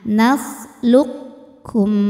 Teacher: Jadi cara baca pertama kalau pakai yang naqis itu huruf qafnya masih ada sifat tebalnya dulu, yaitu sifat isti'la. Jadi qaf masukkan ke kaf namun tidak menghilangkan sifat tebalnya. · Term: idgham mutaqaribain yang naqis